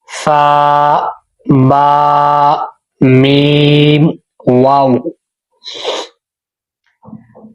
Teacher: یہ چاروں حروف ہونٹوں سے ادا ہوتے ہیں